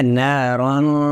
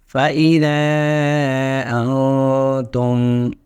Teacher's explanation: ناک میں سے آواز نکالتے ہوئے زبان کو دانتوں کے پچھلے حصے سے ٹچ نہیں ہونے دیں گے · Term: اخفاء